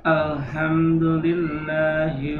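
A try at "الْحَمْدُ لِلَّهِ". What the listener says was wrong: Ulangi, masih H besar itu. Ada di mana Pak makhrajnya H itu? tenggorokan bagian Bagian tengah atau wasatul wasatul halq. Ya, tenggorokan bagian tengah. H, ya. H ini mengalir. Pertama, satu sifatnya adalah tafasi. Kemudian apa namanya, mempunyai sifat yang namanya rohawah, ya, mempunyai sifat rohawah, jadi lunak.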